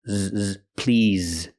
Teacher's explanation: Using the z sound with vibration, like in the word zebra.